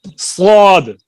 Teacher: اس میں ایک آواز تیز سیٹی کی طرح نکلتی ہے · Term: حروف صفیر